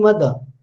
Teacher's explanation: When I say mother, then you can sense, you can perceive that I am dropping the final r.